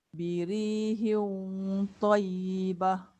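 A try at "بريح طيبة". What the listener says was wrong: Cuma dia jangan banyak gerak bibir. Birihil, hil. Bila akak sebut birihil, hil, dia jadi wow. Tu yang saya kata jangan gerak bibir. Birihil, hil. Lidah dalam yang gerak.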